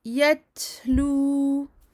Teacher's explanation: Donc ici, attention à ne pas faire une qalqala en disant yet, en disant yetlu. Faites sortir le hams, le petit souffle, uniquement. Yetlu. Ya fatha dal سكون yad.